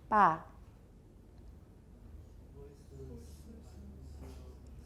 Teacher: it's unvoiced unaspirated initial bilabial stop